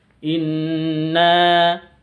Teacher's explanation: Inna nahnu nazzalna dzikra wa inna lahu lahafizun. Inna, nun tasydid bacaan dengung, gunnah musyaddada, nanya panjang 2 harokat.